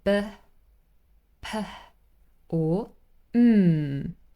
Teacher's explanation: the sound is produced with both lips together